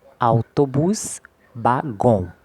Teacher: A sílaba tônica ela é a última sílaba